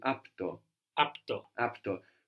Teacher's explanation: We're just losing the last vowel